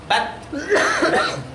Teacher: Jadi kalau disukun itu nempel dulu baru lepas.